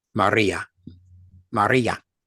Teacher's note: The R's are rolling R's, and that's the way it should be pronounced.